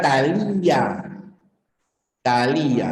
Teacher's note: la fuerza de voz tiene que estar en la cerrada